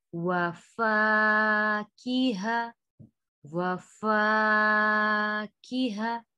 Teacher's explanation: فا کو کھینچیں گے, پھر کی کو نہیں کھینچیں گے, زیر ہے, ہا کو بھی نہیں کھینچیں گے, تا کو واو کے ساتھ ملائیں گے.